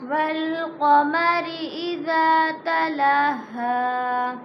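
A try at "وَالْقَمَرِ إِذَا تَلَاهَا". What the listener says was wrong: तला पे शद ना करो। तलाहा। वल्क़मरि इज़ा तलाहा।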